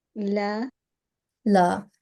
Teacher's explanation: Short stroke of fatha is followed by alif, so we should prolong it for 2 counts, so 2 seconds at least.